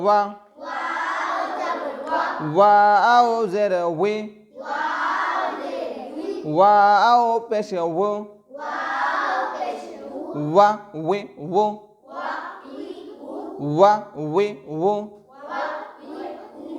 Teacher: ওয়াও দুই ঠোঁটের মাঝের ফাঁক হতে আদায় হবে।